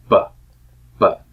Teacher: the two lips are closed all the way cutting off all the air and then the air is released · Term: stop consonant